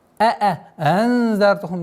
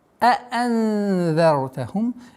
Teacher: Две буквы хамзы нужны четкие, полные, ясное произношение.